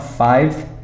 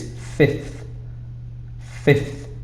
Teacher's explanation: 5 is a bit different because we changed it, the v to a f sound. So it's not 5, it's fifth.